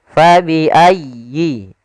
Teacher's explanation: Pada lafal fabi ayyi, di sini sempurnakan di tasydid huruf ya. Jangan fabi ayyi ala, tapi dia sempurnakan.